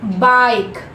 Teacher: जो ग्लाइड हो रहा है एक वाल साउंड से दूसरे वाल साउंड का जो ट्रांजिशन हो रहा है वो बहुत ही स्मूथ हो रहा है. For example again if I से क्राई, CRY, आ ई, the sound is like दो वाल साउंड दिख रहा है हमें, आई और ई दोनों का साउंड है, but it is looking like one sound.